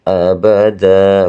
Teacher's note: mewakofkan atau dibaca panjang dua harokat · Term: mad iwad